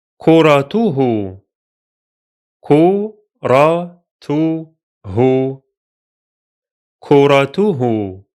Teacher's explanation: The T sound is followed by an H sound, tu, hu, and both have dhamma vowel.